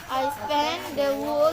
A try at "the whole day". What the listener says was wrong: Bukan wall. The whole day.